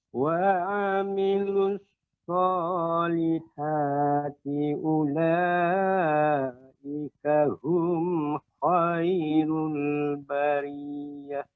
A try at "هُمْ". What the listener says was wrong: Ya, ketika pertama mengucapkan hum ya, mengucapkan hum tidak terlalu apa namanya ke bawah ya, pengucapannya lebih berat. Hum, tidak hum. Nah, akan tapi dia bagian apa tenggorokan, bagian-bagian bawah tidak sampai ke dada kita. Biasa kita mengucapkan hum, akan tapi tidak hum. Ada pengucapan lebih berat ya, mengucapannya ulaika hum. Ini dia terlalu berat. Nah, tidak seperti itu.